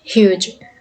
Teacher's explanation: Palatal produced by raising the front part of the tongue, which is the hardest part of the roof of the mouth.